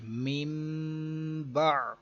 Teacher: اس کی تعریف تھی کہ نون ساکن یا تنوین کے بعد حرف با آ جائے تو اقلاب ہوگا، یعنی نون ساکن اور تنوین کو میم سے بدل کر اخفا کریں گے، غنہ کر کے پڑھیں گے